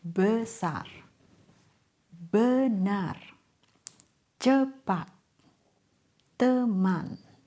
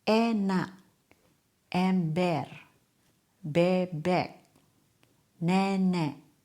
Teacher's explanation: The rule is we have two common sounds for the letter E. Uh uh as schwa and A as open vowel. · It's a neutral vowel. Your mouth barely moves.